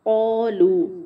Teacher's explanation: قو موٹا ہوگا، قوف بھی موٹا ہے، الف بھی اس کے ساتھ موٹا ہوگا لیکن ہونٹ گول نہیں کرنے